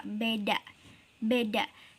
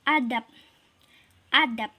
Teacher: B disini akan menjadi P tertutup ketika ia jadi akhir